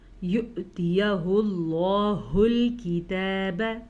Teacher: لفظ اللہ کو پر پڑھیں گے کیونکہ لفظ اللہ سے پیچھے پیش ہے